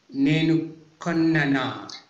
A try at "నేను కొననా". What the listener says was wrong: Same problem అండి. No need to emphasize. No need to emphasize. It should be like